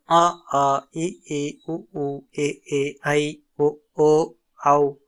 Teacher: உயிர் எழுத்துக்கள் 12ம் கழுத்தை இடமாகக் கொண்டு பிறக்கின்றன